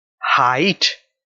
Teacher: the first word two walls e and i are being combined the sound starts in ah and ends on e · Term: diphthong